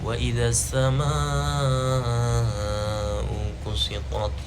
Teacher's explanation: ada mad wajib mutasil, dibacanya 4-6 harakat, jadi panjang.